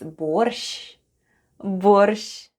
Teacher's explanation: The first sound is /b/, then we have /o/, /r/ and /sh'/.